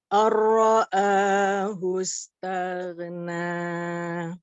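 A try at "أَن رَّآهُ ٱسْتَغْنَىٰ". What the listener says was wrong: Ini sedikit kurang pendek, Bu. Ahus, ar-ra'ahus. Bacaannya sudah sangat baik, makhrajnya sangat baik. Koreksinya adalah pada bacaan mad tobi'i yang 2 harokat, ya, ini ada sedikit kepanjangan ya. Contoh misalkan Rabbikal ladzi khalaq.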